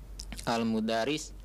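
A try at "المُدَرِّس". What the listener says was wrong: Al-mudarris ra'al tasdid.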